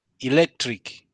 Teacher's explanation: The emphasis should be on the second syllable